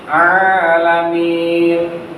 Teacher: Setiap kasrah bertemu ya sukun. Ya sukun hukumnya mad thobi'i. Dibacanya dua harakat